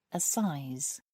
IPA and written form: əˈsaɪz (assize)